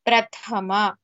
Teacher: Prathama tha is mahaprana.